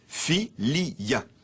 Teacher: Le latin « filia » possédait deux « i » vraiment vocaliques et le mot était trisyllabique.